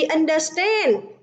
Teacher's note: trọng âm rơi vào âm tiết thứ 3